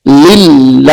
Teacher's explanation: اس میں جلالت اللہ کا لام یہاں پر باریک کر کے پڑھیں گے